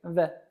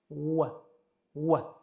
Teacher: Lekin arab tilidagi v harfi faqatgina ikki lab orqali talaffuz qilinishi kerak. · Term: vov